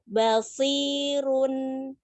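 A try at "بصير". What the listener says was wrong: Ro tebalkan. Ro. Run. Ya, tebal terus.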